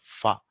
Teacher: You bring the lower lip to the teeth. That is labiodental fa.